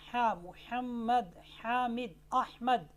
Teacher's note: गले का जो दरमियान वाला हिस्सा है वहाँ से क्या है, हरफ़े हा, हा मुहम्मद, हामिद, अहमद, ये वाली जो हा है ये गले के दरमियानी हिस्से से अदा होती है।